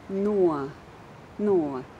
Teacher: the first syllable is no with a diphthong o